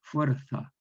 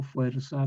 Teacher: Nosotros decimos por el ceseo fuerza como una S.